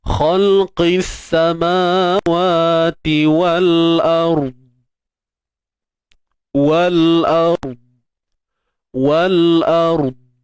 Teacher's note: huruf dad pastikan tebal saja tanpa ada lantunan. Boleh kan? Dia tebal, huruf dad ni tebal, tapi jangan lantun.